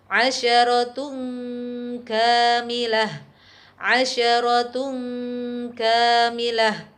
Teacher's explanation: tanwin masih tetap terdengar secara samar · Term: Ikhfa